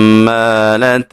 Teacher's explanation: ہا کو باریک پڑھیں گے اور میم مشدد میں غنہ ضروری ہوتا ہے